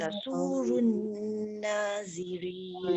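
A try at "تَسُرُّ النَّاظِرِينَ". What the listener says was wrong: Dia jangan tasurun tasurrun sebab ra ada sabdu. Tasurrun. Tekankan ra.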